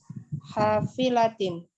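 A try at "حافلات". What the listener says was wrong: Hafilatin. Panjang Bu ya lahnya.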